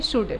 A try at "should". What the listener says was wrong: L नहीं बोलना है, ठीक है सारा?